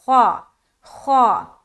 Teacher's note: خا کو بھی موٹا کریں گے کیونکہ حروف مستعلیہ کے اندر آتا ہے، تو خا خا خا ایسا نہیں بولنا، خا خا.